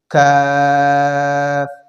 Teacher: کاف کا مخرج ہے زبان کی جڑ کی انتہا، آخری حصہ اور اس کے مقابل اوپر کا تالو سے ادا ہوتے ہیں